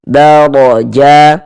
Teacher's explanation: huruf ro dibaca tebal, dibaca tabkhim. Sehingga dengan mengangkat atau menaikkan pangkal lidah kita ketika kita mengucapkannya.